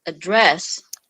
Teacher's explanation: if we want to say this word as verb, so the intonation should be from down going up. It become address.